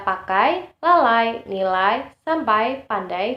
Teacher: vokal yang keduanya diucapkan dengan posisi lidah lebih tinggi dari yang pertama posisi lidah semakin menaik sehingga strukturnya semakin tertutup berdasarkan posisi lidah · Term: diftong naik